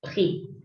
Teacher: la palabra prix, precio, termina en X, esa X no existe.